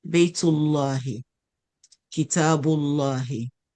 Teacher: Because the last letter before the word Allah has dhamma, we give the lam, we make the lam in the word Allah heavy.